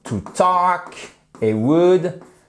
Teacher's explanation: le l ne se prononce pas